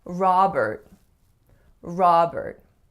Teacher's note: make sure that your first vowel is really that open ah sound. And what I often hear my clients saying for the second syllable is more of an air sound, because it looks like there's an E followed by an R, which logically would be more air, but it's not Robert, it's Robert.